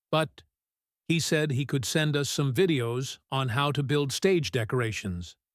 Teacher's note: The voice goes up slightly on but signaling hope. The rhythm becomes faster and lighter as he offers the alternative solution. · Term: pivot rhythm